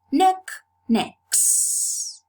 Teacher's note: So this is a case of established progressive assimilation of voice in the realization of the plural morpheme, which is realized as a voiceless sound s, because the previous sound is voiceless too.